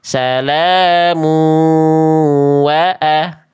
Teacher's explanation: Kalau dibaca lanjut jadi idgham bi gunnah.